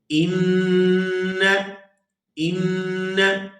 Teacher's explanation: آواز ناک کے اندر جائے گی اور اس کو 2 سے 3 سیکنڈ ناک کے اندر روک کر رکھیں گے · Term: غنہ